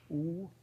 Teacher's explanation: So your tongue is high and bunched up in the back of your mouth and your lips are rounded. · So U is a high back rounded vowel